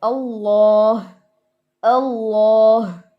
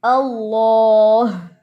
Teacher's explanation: اس اینڈ پہ ہا کی آواز پرومیننٹ ہو اور سٹارٹنگ میں دونوں لام موٹے ہوں